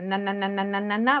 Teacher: La alveolar, es cuando la punta de tu lengua, que se conoce como el nombre de ápice, llega a la parte superior detrás de los dientes, ¿no? De los incisivos. En la parte de arriba hay como unas curvitas que están alrededor.